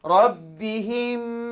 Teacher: kenapa baca dengan dengung kerana mim yang tidak bertanda bertemu dengan huruf yang bersabdu